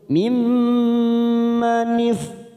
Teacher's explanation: mim bertemu mim yang berharokat kasroh, mim manif namanya bacaan gunnah musaddadah, kita tekan 3 ketuk